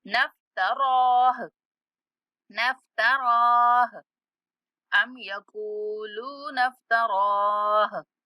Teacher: रा को भी 1 सेकंड तक खींचना है, खड़ा जबर है उसके ऊपर और उसके बाद हा साकना की आवाज आएगी वकफ की सूरत में